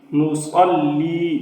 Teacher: نصلی صاد پر بھی پڑھا جائے گا اور سیٹی کی آواز بھی ہے